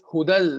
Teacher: The noon of the tanween entered into lam fully. So the noon is gone and the sifa of nasalization is gone. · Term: idgham bighair gunna